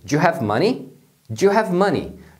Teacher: Então, é importante que você aprenda como eles pronunciam realmente no dia a dia as junções, por exemplo, do do you. Quando eles estão falando rápido, então eles pronunciam o do you como do. Eles juntam numa única palavra.